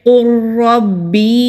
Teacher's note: لام کی آواز کو را اور قوف میں مدغم کر دیں گے، یعنی کہ جذب کر دیں گے، تو اس لیے لام ادا نہیں ہوگا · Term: ادغام